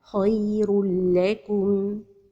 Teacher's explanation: And the إدغام with the lam is without غنة.